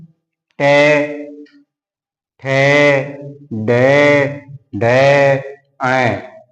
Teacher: मूर्धन्य, यानी कि जो मुख होता है वो बंद की सी अवस्था में रहता है